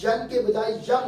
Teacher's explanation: اب ین اور بو کو اکٹھا کریں گے تو اب ین کے بجائے یم ہو جائے گا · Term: اقلاب